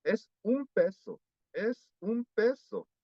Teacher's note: Cuando no hay pausa, es un peso, es un peso. Se pronuncia con una M.